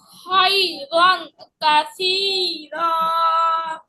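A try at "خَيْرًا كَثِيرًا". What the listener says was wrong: এখানে তো গুণনা হবে, সেম গুণনা। আং, আং।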